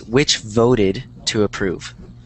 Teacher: that you that you emphasize um or you enunciate the Ed because otherwise it's going to sound like vote which is not the past tense